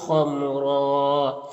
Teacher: را میں وقف کریں گے تو ایک زبر کے ساتھ الف پڑھیں گے، اور را کو پر پڑھیں گے